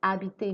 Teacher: the H in French is silent so we pronounce from the vowel after the letter H